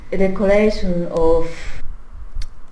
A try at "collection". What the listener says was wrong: Oof, how did she pronounce collection here? Collection. It sounds like her word stress is a bit off there.